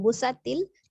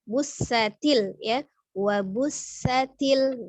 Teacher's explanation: ada huruf sin ya, sifatnya hamas, alirkan nafasnya ketika mengucapkan huruf sin. Jadi dia memiliki sifat safir atau desis. Jadi jangan langsung busatil, tapi busatil ya.